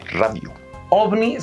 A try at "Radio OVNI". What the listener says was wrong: Radio OVNI. No, perro. Arrastra esa R.